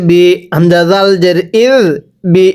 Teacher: এই জালটা নরম করে পড়ব জালকে যদি জিম শক্ত করে পড়ি পড়াটা শুদ্ধ হবে না